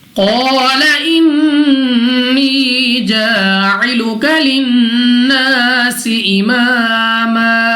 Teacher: قال قاف مستعلی میں سے موٹا پڑھیں گے، الف سے پہلے زبر الف مدہ 2 سیکنڈ تک لمبا کرنا ہے، نون مشدد غنہ کر کے پڑھیں گے